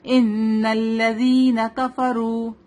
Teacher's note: کفرو رو heavy ہوگا کیونکہ رو کے اوپر کیا ہے پیش ہے